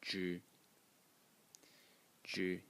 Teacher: a character which today is pronounced zhi, zhi in the first tone